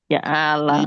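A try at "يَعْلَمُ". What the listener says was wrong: ইয়া ইয়া আলা এরকম যেন না হয়, একটা ধাক্কা হবে, হালকা একটা ধাক্কা হবে। ইয়া আইন জবর ইয়া, ইয়া আইন জবর ইয়া বলেন।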